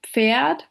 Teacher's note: The affricates pf and ts appear in words like Pferd, which is horse, or Zeit